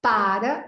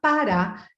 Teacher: para é uma paroxítona parar é a última sílaba que é forte